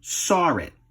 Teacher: the dropped R is re-added at the end of a word if the next word starts with a vowel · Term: intrusive R